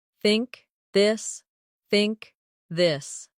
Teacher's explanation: In words like think or this. The tongue comes gently between the teeth. For think it's soft. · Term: th sound